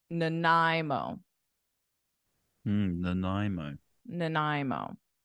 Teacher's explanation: we pronounce it as I, nai, nai. And then the beginning is like unstressed.